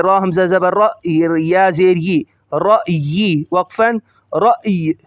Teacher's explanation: تھوڑا سا معمولی سا یا کو ظاہر کریں گے رکتے ہوئے